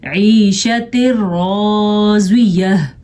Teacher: نون تنوین کے بعد را آ گیا ہے تو یہاں پہ ہم نے اس کو آپس میں ملا دیا ہے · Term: ادغام بلا غنہ